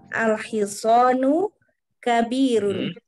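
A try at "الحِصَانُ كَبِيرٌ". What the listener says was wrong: Ahsan di barakallahu fiik. Sahih.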